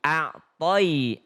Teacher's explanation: Ada ya sukun maka dia seperti huruf y, ai ya. Seperti huruf seakan-akan bunyinya ke i.